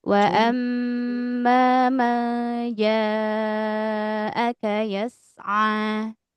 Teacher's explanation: ja panjang empat bisa lima harakat ya